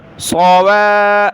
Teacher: صوا واو کو نرم پڑھنا ہے، صوا فا، فا کو سخت کریں گے، صوا واو کو سخت نہیں کریں گے